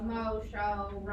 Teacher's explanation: When you say like all those like mo words, you don't really say the W, you're just kind of saying O.